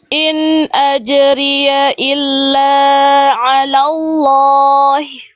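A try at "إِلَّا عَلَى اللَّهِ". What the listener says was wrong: Oke, illa la-nya kepanjangan ya. 2 harokat aja, kadarnya jangan berlebihan. In ajriya illa ala Allahi dan seterusnya.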